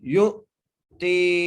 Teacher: یا کو حمزہ سے ملانا ہے اور جھٹکا دینا ہے ، یؤتی، تا کو ایک الف مدار کھینچ کے پڑھنا ہے،